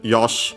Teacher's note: the uh e at the end is barely heard if at all uh preceded by an unvoiced consonant